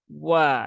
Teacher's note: Bibirnya di memonyongkan dua bibir jadi wa ya monyong dulu baru dibuka bukan Wa Wa kalau wa dia tidak monyong nah ini satu-satunya